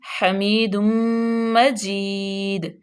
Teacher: می کو لمبا کیوں کیا کیونکہ یا ساکن ما قبل مکسور ہے تو یا مدہ ہو جائے گی